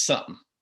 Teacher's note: some people reduce that second syllable to basically a grunt